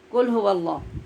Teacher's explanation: جب ہم قل هو اللہ پڑھتے ہیں آواز ٹکرائے بغیر تو یہ کتاب والے کاف کی آواز ہوتی ہے